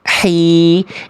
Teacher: Jadi karakter H kecil itu lembut, berbisik, clean. Tidak berat kayak H besar. Tidak ada agak kresek-kresek kayak kho.